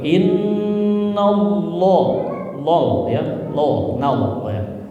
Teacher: Jadi agak tebal nalnya ya. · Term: tafkhim